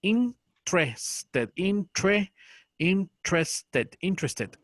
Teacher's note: Pero en este caso se pronuncia sin la primera E.